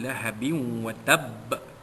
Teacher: Lahabin dua bawah bin bertemu dengan huruf waw idgham ma'al gunnah, memasukkan bunyi tanwin ke dalam huruf waw dengan berserta dengung, idgham ma'al gunnah atau idgham naqis.